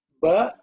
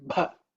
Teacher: Ba is no air hitting the hand. Bha means air will hit. That means mahaprana.